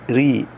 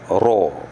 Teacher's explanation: Ra bila baris di bawah muraqaqah, nipih. Ri. Kalau tebal, ra.